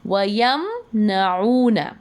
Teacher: وَيَمْنَعُونَ نہیں کریں گے، نہ ہی ناک میں میم کی آواز کو ہینگ کرنا ہے، نہ گننا کرنا ہے، کلیئرلی پڑھیں گے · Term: اظہار شفوی